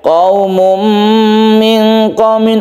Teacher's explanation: tanwin ini masuk ke mim sehingga membentuk tasydid mim. Qaumum membentuk tasydid mim sehingga dia itu disebut idgham atau masuk ya. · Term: idgham bi gunnah